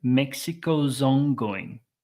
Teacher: the Z links very nicely into the vowel, the O sound in the next word.